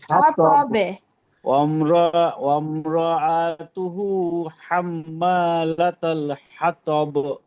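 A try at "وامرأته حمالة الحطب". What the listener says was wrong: মাশাআল্লাহ।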